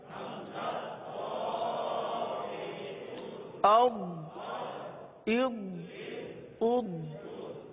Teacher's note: داڑ جو دو دو دانت ہوتے ہیں اس کو داڑ بولتے ہیں. تو داڑوں کی جڑ سے یہ حرف ادا ہوتا ہے اور اس حرف کو پورا ادا کرتے ہیں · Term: ضاد